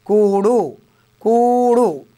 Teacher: కూ దీర్ఘంగా పలుకుతున్నాం కాబట్టి గురువు